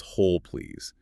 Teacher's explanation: the L sound at the end of whole often connects smoothly to the P sound in please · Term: linking sounds